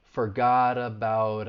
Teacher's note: in the u.s people often use the flap t which is kind of like a soft d sound · use this when the t comes between two vowel sounds so the t that final t and forgot and the final t in about are going to be said with more of a flat t and it's going to to sound like a d